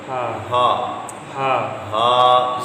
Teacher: ہا پہلے آپ نے پڑھا تھا ہا حلق کے وسط سے، یہ حلق کے نچلے حصے سے ہے